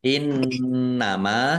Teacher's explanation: nun tasdid bacaan ghunah dibaca dengung ditahan biar tampak dengungannya